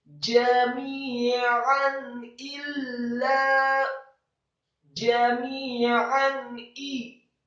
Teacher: ain yang fathah tanwin ditekankan keluar dari tenggorokan